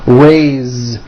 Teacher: even though it is spelled with an S, it's pronounced with a voiced Z. Raise. So we say I raise with a voiced Z ending, and he raises.